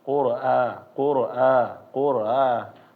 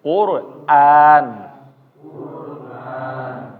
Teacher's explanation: ketika membaca Hamzah itu harus ditahkik ya namanya adalah dia benar-benar dibaca a jangan membacanya kalau misalnya kita malas ya bacaannya Jadi kurang jelas